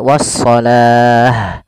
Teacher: Tapi karena kita waqaf, maka di sini awalnya kalau dia ada huruf ta marbutah seperti ini, awalnya was-salati, kalau kita waqaf dia kita ganti dengan huruf ha yang disukunkan. Maka menjadi was-salah.